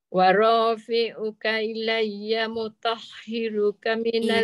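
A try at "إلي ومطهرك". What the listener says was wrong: Bukan ya mutah je ada waw.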